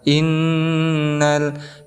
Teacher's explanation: Di sini ada huruf nun yang bertasdid, maka dihukumi sebagai ghunnah musyaddadah. Cara bacanya kita dengungkan, boleh 2 sampai 3 harokat.